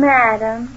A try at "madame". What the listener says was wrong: Can't you say madame with the accident on madame? Not madam like you say it.